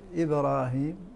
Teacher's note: فالصغرى في حرف القلقلة الساكن مثل إبراهيم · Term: قلقلة الصغرى